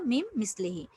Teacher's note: নুন হরফটি পরবর্তী মিমের সাথে ঈদগাম হচ্ছে